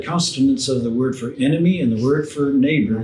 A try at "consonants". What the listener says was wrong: There you go. You had an extra T in there.